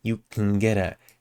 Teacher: here can gets really reduced and it blends with get